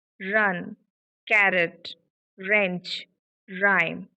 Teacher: our vocal folds are vibrating, and that's why it is voiced consonant